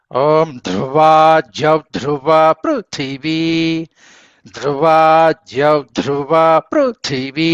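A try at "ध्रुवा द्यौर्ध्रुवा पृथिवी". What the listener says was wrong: ధ్రువాద్యౌ కాస్త దీర్ఘం ధ్రువాద్యౌ ధ్రువ పృథివీ రేప కూడా చెప్పాలండి ధ్రువాద్యౌర్ధ్రువ పృథివీ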